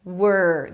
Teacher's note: You start with the W and then you move on to the R immediately. Word. There is no O in the middle, so don't say something like world, okay?